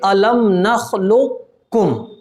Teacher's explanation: ناقص ہوگا وہ اس لیے کہ قاف کی ایک صفت ہے، صفت استعلا، اس کو باقی رکھیں گے. اور جب وہ باقی رکھی جائے گی تو اس صورت میں اس کی پڑھنے کی جو ادا ہوگی وہ ہوگی الم نخلقکم.